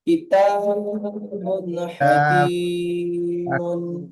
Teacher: তানবিনকে বিনা গুণায় জাহির করে তাড়াতাড়ি পড়তে হয়